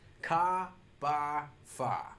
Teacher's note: the Boston accent is definitely non-rhotic. We're going to drop those final R's.